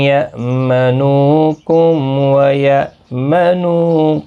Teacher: یا منو نو واو مدہ ہے، ایک الف کی مقدار کے برابر کھینچیں گے۔ کم میم ساکن کے بعد واو آئے، اظہار شفوی ہوگا، یہاں پر گنہ نہیں ہوگا، یعنی میم کو ظاہر کر کے پڑھیں گے۔ یا منو حمزہ ساکن کو جھٹکی کے ساتھ پڑھیں گے، نو واو مدہ ہے، قو واو مدہ ہے، ایک ایک الف کی مقدار کے برابر کھینچ کر پڑھیں گے۔